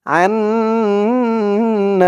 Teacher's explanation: হরকতের পরে নুনের উপরে তাসদিদ তো দোনোটাই আমাদের ওয়াজিব গুন্না করে পড়তে হবে